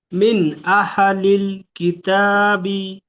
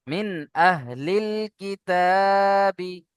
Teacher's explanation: আহা হয়ে যাচ্ছে, হায়ের উপরে থামতে হবে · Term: সাকিন